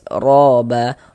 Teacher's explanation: dibaca tebal, tebalkan huruf ro-nya